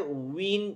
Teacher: विन की आवाज़ के अंदर गुलाई आएगी। पढ़ें, वाव दो पेश वुन, वन विन वुन।